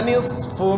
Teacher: nisfu itu juga berdesis, namanya hams